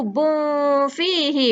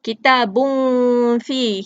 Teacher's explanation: Tetapi apabila dia bertemu dengan fa di tepi, bun tu dia dimasukkan ataupun disembunyikan berdekatan dengan makhraj huruf fa